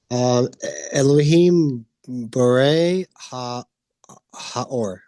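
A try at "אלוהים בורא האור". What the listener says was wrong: Yes, that's right. Good job.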